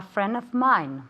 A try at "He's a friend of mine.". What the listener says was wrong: Very good. He's, recuerda la S,